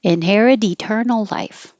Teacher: The T will connect to the E and change to a D.